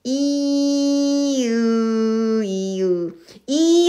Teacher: 으라고 발음하면은 어 혀가 뒤로 쑥 들어가는 것을 알 수 있어요. 입술도 펴져 있고 그리고 입 모양도 더 벌어지지 않는 상태에서이 혀의 위치만 뒤로 가는 것을 알 수가 있습니다.